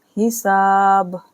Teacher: با پر ہم ساکن کر دیں گے، حساب، اور کلکلا بھی ہوگا